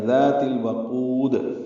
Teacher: تا کو لام سے ملانا ہے، اظہار قمری ہے واو کی وجہ سے. واو ہونٹوں کی نا تمام گلائی سے جلدی ادا کریں گے